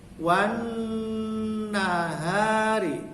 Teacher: Wan nya itu, nunnya itu dipanjangkan dengung